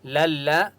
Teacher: لل لام، لام زبر لل، لام کے پر تشدید ہے اس لیے لام کو لام کے ساتھ ملائیں گے اور مضبوطی کے ساتھ پڑھیں گے